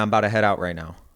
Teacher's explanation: The word out has the diphthong because it's stressed, but the word bouta doesn't really. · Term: mouth diphthong